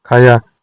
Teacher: यदि धातु स्वरात है, खा, पी और बाद में आने वाला स्वर वी वर्त आ ओ हो तो बाद वाले स्वर के पहले य का आगम हो जाता है